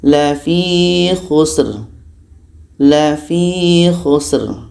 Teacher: dibaca tebal pangkal lidah kita terangkat